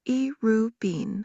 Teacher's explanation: Irubin, pronounced Irubin, high, mid, low tone, specifically refers to seeds or planting material.